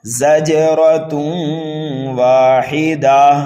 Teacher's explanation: جیم یہ حروف قلقلہ میں سے ہے، یہاں پر قلقلہ ہوگا، قلقلہ صغیرہ، را کے اوپر زبر ہے، اس لیے را کو پر کر کے پڑھنا ہے، تنوین کے بعد واو آ رہا ہے، اس لیے یہاں پر ادغام ہوگا، زجرۃ واحدہ، اس گول تا کو ہا سے بدلیں گے، یہاں پر بھی وقف بالابدال ہوگا، واحدہ۔